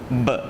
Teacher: huruf ba kalau duduk di hujung lepas tu mati, kita kena tendang sikit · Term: qalqalah